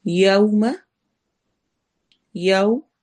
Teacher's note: یو میں ہونٹ ہمارے گول ہوں گے کیونکہ یہاں پر واو لین ہو رہی ہے